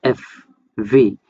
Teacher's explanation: টু articulate the লেবিওডেন্টাল consonants, the lower lip, নিচের ঠোঁট makes contact with the upper front টিপ, উপরের দাঁতের সাথে, নিচের ঠোঁট উপরের দাঁতের সাথে একসাথে কন্ট্যাক্ট করার মাধ্যমে যে উচ্চারণগুলো করে সেগুলো হইতেছে লেবিওডেন্টাল কনসোনেন্ট